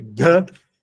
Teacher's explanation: Gata tá errado. É Gata, com T cerebral.